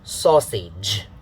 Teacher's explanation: syllable falling on the first syllable so it's darker the second syllable is unstressed and has a lower pitch